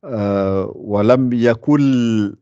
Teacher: le noun, on l'entend plus. On attaque, après le kaf, on attaque le L directement. Walam yakul, kul, K-O-U-L.